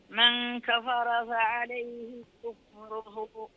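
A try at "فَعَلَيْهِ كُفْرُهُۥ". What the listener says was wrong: في حالة الوقف في حالة الوقف تترك عنك الصلة محجوبة في حالة الوقف لا تترك عنك الصلة فها الضمير هون لا تقولي من كفر فعليه كفره كفره وهكذا يا قيل لا تقولي كفره تسكتي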